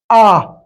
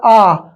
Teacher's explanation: विवृत का मतलब आप समझ लीजिए कि मुंह पूरा खुला हुआ, ठीक है, मुंह जो है वो पूरा खुला हुआ है